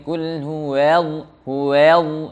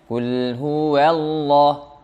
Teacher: Qul huwa tebal, padahal waw tipis, Allah tebal.